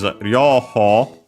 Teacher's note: The accent here is on the ho.